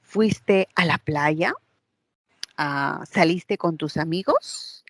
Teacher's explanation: Cuando nosotros tenemos una pregunta sin un pronombre interrogativo, únicamente la pregunta se marca por el tono, ¿no? Ascendente. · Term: tono ascendente